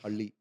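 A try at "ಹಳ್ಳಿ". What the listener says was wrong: No, roll your tongue.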